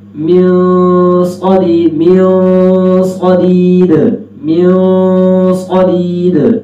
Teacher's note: میم کے بعد صاد آ رہا ہے تو وہاں پہ ہم موٹا کر لیں گے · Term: اخفا موٹا